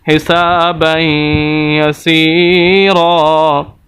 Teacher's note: سین کو ہم لمبا کر رہے ہیں، وجہ یا مدہ ہے